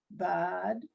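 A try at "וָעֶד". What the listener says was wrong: It's the vowel. Va.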